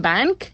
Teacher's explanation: when we put it in bank, we are not using the n sound. We are using the ng sound.